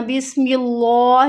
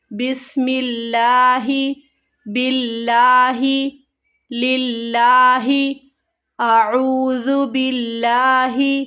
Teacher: اگر اللہ کے لام سے پہلے زیر کی حرکت آ جائے تو اسے ہمیں باریک پڑھنا ہے